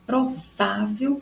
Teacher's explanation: porque o vá é mais forte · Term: paroxítona